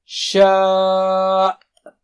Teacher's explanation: آخری کا حمزہ کا جھٹکا واضح ہو